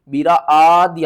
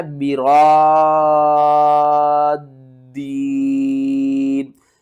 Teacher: فَمَا الَّذِينَ فُضِّلُوا، را الف دال حمزہ مد زبر را، دال یا زیر دین، برادین، مد لازم ہے تو آپ نے کیا کرنا ہے 6 الف کے برابر کھینچ کر پڑھنا ہے